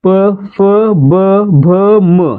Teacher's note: गट कोणत्या वर्णामध्ये मोडतो तर औष वर्णामध्ये मोडतो का मोडतो कारण प चा उच्चार करताना आपल्या ओठांची हालचाल होते आपले ओठ एकमेकांना चिकटतायेत · प फ ब भ म हे काय आहेत औष्ठ वर्ण आहेत आणि यांचा उच्चार स्थान कोणता आहे ओठ · प चा उच्चार करताना आपल्या ओठांची हालचाल होते, आपले ओठ एकमेकांना चिकटतायत, त्यामुळे प च्या गटातील जे व्यंजन आहेत त्यांना आपण काय म्हणणार, औष्ठ्य व्यंजने म्हणणार. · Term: औष्ठ व्यंजने, औष्ठ्य वर्ण